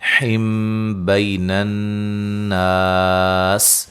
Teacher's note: یہاں نون تنوین کا اقلاب ہے، غنہ کریں گے، نون کو میم سے بدل دیں گے